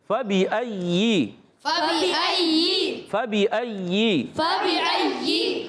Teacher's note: یا ادا ہوتا ہے وسط زبان وسط تالو سے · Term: یا مشدد